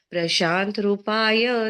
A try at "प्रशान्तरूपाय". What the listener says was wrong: प्रशांत रूपाय, रू दीर्घ है यहाँ पर, तो दीर्घ उच्चारण कीजिए।